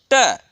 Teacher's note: जहाँ पर जिह्वा का स्पर्श पूर्ण रूप से मूर्धा से होता है